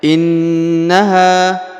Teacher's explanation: ditekan ditahan selama dua harakat lalu didengungkan ya innaha kemudian huruf ha dipanjangkan dua ha harakat ya karena